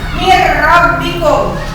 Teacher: Ditulisnya min rabbikum, tapi dibacanya min rabbikum. Nun matinya dimasukkan ke dalam ro seolah hilang. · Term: idgham bilaguna